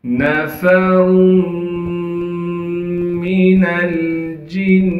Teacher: جیم کو نون مشدد سے ملانا ہے، کیونکہ نون مشدد پر تشدید ہے۔ تشدید ہونے کی وجہ سے نون میں ایک الف کی مقدار غنہ کیا جائے گا۔